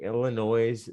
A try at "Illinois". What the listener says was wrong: Illinois. You don't pronounce the S. No, you don't.